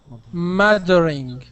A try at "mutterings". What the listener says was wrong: give me an S there at the end